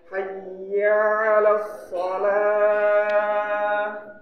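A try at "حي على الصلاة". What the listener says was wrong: Ianya pendek Pak. Hayya 'alas shalah. Ianya langsung. Hayya 'alas shalah.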